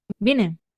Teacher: Vemos cómo tenemos una subida tonal con un pico que se alcanza dentro de la tónica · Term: acento bitonal